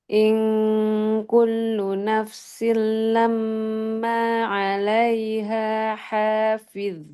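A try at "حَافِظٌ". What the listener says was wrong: Ini makin kurang tebal ini. Oke. Tebalkan, angkat pangkal.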